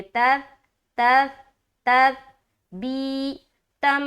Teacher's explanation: वतस्बीतम, वाव ज़बर वा, ता सा ज़बर तस, वतस, बा याजिर बी, तामीम ज़बर, तामीम दो ज़बर तम, तस बी, बी में या मद्दा, और ता को जब सा से मिलाएंगे बगैर सिटी के